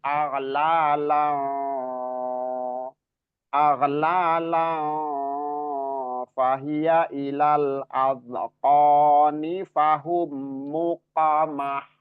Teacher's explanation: Nah, qafnya qalqalah, haunya ha yang tipis ya.